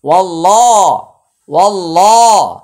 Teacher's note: ওয়াও লাম জবর ওয়াল, লাম খারা জবর লা, ওয়াল লা। এখানে আল্লাহ শব্দের পূর্বে একটি জবর আসছে, তাই এটা উচ্চারণে মোটা হবে, আর মাঝখানে আলিফ এবং লাম এটা উচ্চারণে আসবে না।